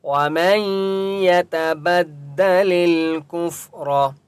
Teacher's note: بدّ لل کفر، فا کے اوپر سکون ہے اس لیے کاف کو فا کے ساتھ ملائیں گے. را مستعلیہ میں سے ہے اس لیے را کو پر پڑھیں گے